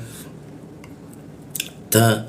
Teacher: ta itu bocor tipis ya di gigi dia